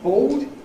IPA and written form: bɔʊd (board)